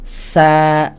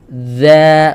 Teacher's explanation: Kalau hamsnya dihilangkan, fatal, lahan jali. Kenapa? Karena berubah jadi huruf zal.